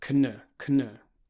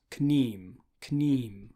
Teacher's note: You'll see KN next to each other, and unlike English, it won't just be the N sound, you'll pronounce the K. It's pronounced as written.